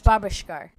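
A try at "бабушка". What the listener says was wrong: She literally put an R on the end.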